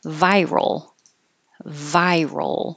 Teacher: remember this RL movement from the r to the L you keep your voice on the whole time